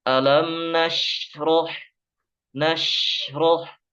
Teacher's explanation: terpantul Alam Nas nasoh meskipun tipis juga tidak boleh terpantul karena huruf Sin itu bukan huruf yang dipantulkan